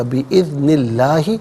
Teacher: لام سے پہلے والے حرف نون کے نیچے زیر ہے تو اسم اللہ کے حرف لام کو باریک کر کے پڑھا جائے گا ، بِإِذْنِ اللَّهِ وقف کریں گے تو بِإِذْنِ اللہ پڑھیں گے،